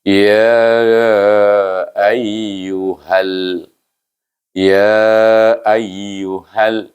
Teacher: Jangan panjang. Walaupun dia idgham, dia tak ada panjang. Satu harakat dia. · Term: idgham syamsi